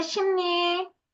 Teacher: 비음 뒤 리을이 니은으로 발음 난다